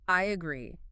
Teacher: Just remember, it is a verb. Stress the second syllable